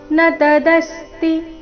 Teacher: ನತದಸ್ತಿ ದ ಮೇಲೆ ಆಘಾತ ತೀರಸ್ವ